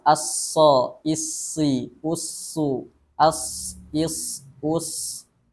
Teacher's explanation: Sifat huruf shad yang pertama yakninya adalah hams atau mengalirnya nafas, sama seperti huruf shin tadi.